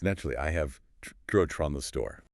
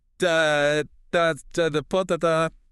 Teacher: The function words just become quick little schwa sounds to get you to the next stress beat.